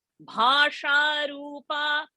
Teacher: Annada Vasudha Vriddha Brahmatmya Swarupini Bruhati Brahmani Brahmi Brahmananda Balipriya Bhasha Rupa. See, Bha, Mahaprana, Sha, Murdhani Sha. So that differentiation has to come.